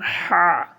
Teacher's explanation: এই যে হা দেখতে পাচ্ছি এটা হা আপনাকে কণ্ঠনালী চেপে পড়তে হবে। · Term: বড় হা